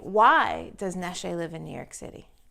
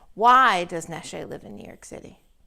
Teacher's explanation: you can very clearly hear my voice go down at the end